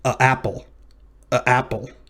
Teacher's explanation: that sound is called a glottal stop it's that very brief stop in breath